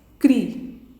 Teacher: Perceberam que o an é o mais forte na palavra? Então, é ela que é a sílaba tônica.